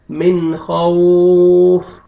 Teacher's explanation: نون ساکن کے بعد حروف حلقی میں سے خا ہے، آپ نے اظہار کرنا ہے، جلدی پڑھیں گے.